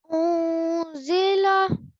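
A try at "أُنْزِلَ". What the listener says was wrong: Nice. Next one.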